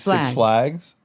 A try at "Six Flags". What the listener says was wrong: You put the emphasis on flags.